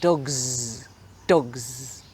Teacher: but dogs finishes with a z sound you should feel it here